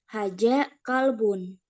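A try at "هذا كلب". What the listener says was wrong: hanya saja untuk huruf zal ya hadza bukan haja karena haja itu jim ya nanti apa latih aja anu pengucapan zal.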